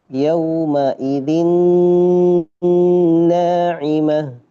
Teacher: Maka ketika bacanya harus masuk ke khaisyum, harus masuk ke hidung. Jadi dibaca ee yaumaidin naimah ini insyaallah ke hidung karena huruf nun nun sudah hidung. · Khayshum. Maka ketika bacanya harus masuk ke khayshum, harus masuk ke hidung. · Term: ghunah, gunnah